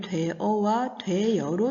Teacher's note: 되여에서 어가 여로 소리가 나게 되는 것이죠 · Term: 반모음 첨가